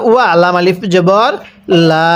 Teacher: এই লামের মধ্যে আমরা এক আলিফ টান দিব